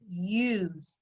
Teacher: end and the e is making the u tell its name but that s sounds like a z